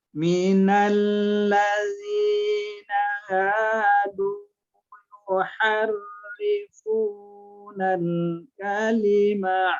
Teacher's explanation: Du yuhar ha kecil. Kalau kita menyebutnya ha kecil ada di tengah-tengah tenggorokan